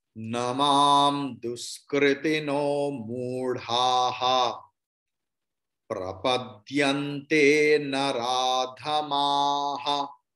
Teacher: विसर्ग का प्रोनाउंसिएशन है ह and ha will be ha because before visarga there is akara